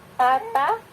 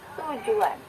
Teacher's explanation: Tapi ketika melafalkan bunyi tujuan, bibir kita membulat atau manyun, gitu ya, monyong, gitu ya.